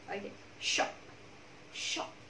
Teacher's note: À, âm chặn là nào? Âm dừng lại chứ không có sự ngân